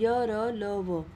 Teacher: इनके उच्चारण में जीभ मुख के किसी विशेष भाग के निकट तो आती है किंतु उसे स्पर्श नहीं करती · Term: अंतस्थ व्यंजन